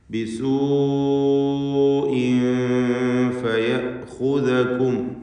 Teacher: ബിസൂഇൻ എന്നതിലെ ദീർഘം മദ് മുത്തസിൽ വാജിബാണ്. വാവിനെ 4-5 ഹറക്കത്തിൻ്റെ അളവിൽ ദീർഘിപ്പിക്കൽ നിർബന്ധമാണ്. ഒറ്റ പദത്തിൽ വാവിന് ശേഷം ഹംസ കൂടി വന്നു എന്നതാണ് ഈ ദീർഘം ഉണ്ടാകാൻ കാരണം.